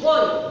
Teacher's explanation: ওই ধ্বনিটি হচ্ছে একটি যৌগিক স্বরধ্বনি।